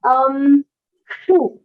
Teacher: sh is another pronunciation where the tongue does not touch the top, the hard palate of the mouth. It goes there, but it doesn't touch it.